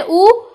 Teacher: जैसे हम बोलते हैं उ, तो हमारा मुख क्या है? खुला है, गोल है, या होठों की आकृति कैसी है? गोल है। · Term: वृत्तमुखी